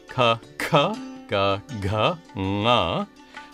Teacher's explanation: Next come the consonants, which are organized according to their place of articulation, starting with the gutturals at the back of the throat